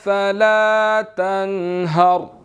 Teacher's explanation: را جو ہے وہ ساکن ہے اور اس سے پہلے زبر ہے تو موٹا ادا ہوگا